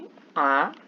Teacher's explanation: আ ধ্বনিটি উচ্চারণের সময় জিহ্বা নিচের দিকে নেমে আসে বলে একে নিম্ন বিবৃত স্বরধ্বনি বলে।